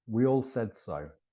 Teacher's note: what happens is the vowels almost disappear. The consonants are all pushed together.